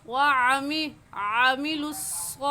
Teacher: व अमिलुस्सालिहाती गलत है और सही है व आमिलुस्सॉलिहाती, स्वाद के ऊपर हा के ऊपर खड़ी ज़बर है तो उसको एक एक अलिफ के बराबर खींच कर पढ़ेंगे।